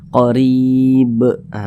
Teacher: ketika dia sukun atau sebab sukun karena disukunkan maka dipantulkan bacanya Qorib ah begitu dan ini termasuk kepada Qalqalah kubra karena